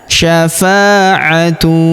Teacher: Huruf F kita panjangkan 2 harokat karena terdapat alif di depannya.